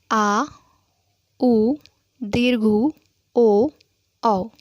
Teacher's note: पश्च स्वर वे स्वर हैं जिनके उच्चारण में जीभ का पश्च भाग अधिक क्रियाशील होता है।